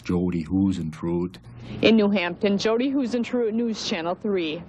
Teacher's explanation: Minnesota so she was a natural fit there she had a a little bit of a Minnesota accent with the long vowels